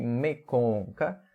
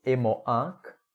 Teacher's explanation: o E inicial, a vogal inicial ficou nasalizada, né? O ficar em silêncio começa com E, mas o desligar algo começa com E, um E nasal.